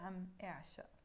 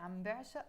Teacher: you have the option of dropping your b or keeping it